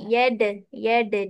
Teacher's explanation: Huruf dal tu bawa ke belakang gigi je. Gigi depan ni.